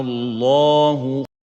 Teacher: apply compulsory elongation mad on this alif for 6 units